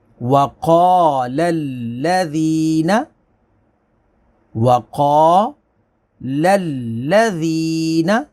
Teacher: قاف کو موٹا پڑھیں گے، الف سے پہلے زبر ہے، اس کو کھینچیں گے، ذال کو نرمی کے ساتھ پڑھیں گے، یا ساکن سے پہلے زیر ہے، یا مدہ ہوگی۔